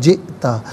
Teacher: حمزہ ساکن ہے، جھٹکے کے ساتھ پڑھا جائے گا،